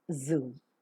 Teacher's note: palate is raised to shut off the nasal passage of air the tip of the tongue comes very close to the upper teeth or the alveolar ridge to form a narrow passage through which the air that is coming out the lungs passes with an audible friction during the pronunciation of Z the vocal cords vibrate as you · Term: voiced